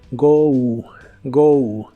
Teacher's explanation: se pronuncia como si terminara con una u